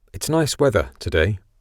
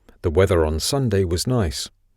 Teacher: in the second example there was a clearly pronounced r on the end of weather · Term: linking r